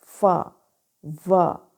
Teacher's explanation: जैसे फ प्रोनाउंस करें फ, व, तो एज अ रिजल्ट जो साउंड प्रोड्यूस होती है उसको लेबियोडेंटल साउंड कहते हैं। इसमें लोअर लिप एक्टिव आर्टिकुलेटर है, पैसिव आर्टिकुलेटर फ्रंट टीथ।